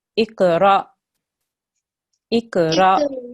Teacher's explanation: Now, if you have an alif with a sukoon on it, you don't elongate the ra, you have to make a soft jerk there